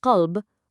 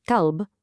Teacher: listen to that deep, resonant back of the throat kh. Qalb means heart, but kalb, with a light forward K, exactly like the English word kite, well, that means dog.